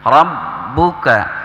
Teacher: Rabbuka, ra, kemudian ba-nya di tasydid maka harus ditahan